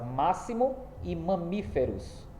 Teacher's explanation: Ambas as palavras, ou seja, as duas palavras estão acentuadas na antepenúltima sílaba. Então, só resta dizer que elas são palavras proparoxítonas, porque a antepenúltima é a sílaba mais forte e por isso é acentuada.